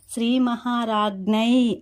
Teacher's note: అంటే ఇవి రెండు కలిసినప్పుడు జ్ఞ అవుతుంది. దీనికి ఈకార దీర్ఘం ఇస్తే జ్ఞే అనే ముక్కుతో అనునాసిక ధ్వని వచ్చేలా పలకాలన్నమాట